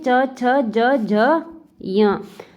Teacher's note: च वर्ग का उच्चारण स्थान है तालू